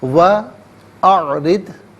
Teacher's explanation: را کے نیچے زیر ہے، را کو باریک کر کے پڑھا جائے گا